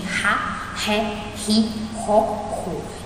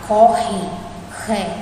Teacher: na palavra corre, ré, né? A gente tem um som forte do R. E notem que ele está entre vogais, né? Ele está entre o O e o E.